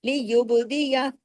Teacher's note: बा पे कलकला कीजिए क्योंकि कुतुब जद का लेटर है · با پہ کلکلا کیجئے، کیونکہ قطب جد کا لیٹر ہے، جزم کے ساتھ ہے